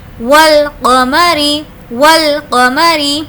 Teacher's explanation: الف کو اسکپ کر دیا، ڈائریکٹ واو کو لام سے ملا دیا، ول، اس کا مطلب ہے کہ یہ حروف قمری ہے۔